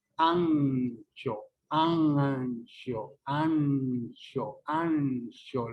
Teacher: este fonema alveolar se convierte en un sonido palatalizado